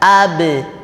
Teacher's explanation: suaranya memantul contohnya huruf ba ab jadi tidak berhenti tidak berdesis